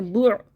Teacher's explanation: بہت سے لوگ اس کو واو مدہ بناتے ہیں، بو بناتے ہیں، بو حلق کو بند کریں، بو ہونٹ گول کر کے حلق بند کریں